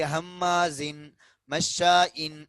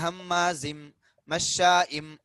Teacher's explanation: தன்வீனுக்கு பின்னாடி மீம் வருது. அதனால இங்க இணைத்து ஃபின் அப்படின்றத ஃபிம் அப்படின்னு இணைத்து இங்க குன்னாவுடைய சட்டத்தை ஃபாலோ பண்ணணும் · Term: இதுகாம் பிகுன்னாவுடைய சட்டம்